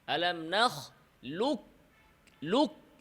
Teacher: কফের কোন নামগন্ধ থাকবে না কফটা পুরোপুরি কাফ দ্বারা পরিবর্তন হবে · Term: ইদগামে কামিল